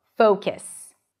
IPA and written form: foʊkəs (focus)